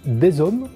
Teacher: on prononce des hommes en faisant la liaison avec Z